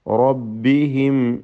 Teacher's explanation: റബ്ബിഹിം, റാഇ പൂർണ്ണമായ തഫ്ഖീം കൊടുത്ത് തടിപ്പിക്കണം.